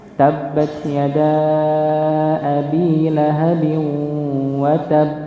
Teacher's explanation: Karena di situ ada tasydid, maka ditahan dulu, ditekan dulu, tahan. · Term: qalqalah kubra